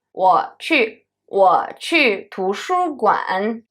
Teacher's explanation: When the third tone stands in the end of the sentence, we pronounce it fully. However, when the third tone stands in the middle of the word, in the middle of the sentence, beginning of the sentence, we pronounce it as half third tone. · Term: full third tone